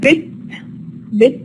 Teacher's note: The ta here is unreleased because it occurs in a final position.